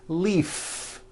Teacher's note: If you stop the voicing at the end of the vowel E, then you would be saying leaf with an unvoiced F. And the word we're trying to say is leave with that voiced V.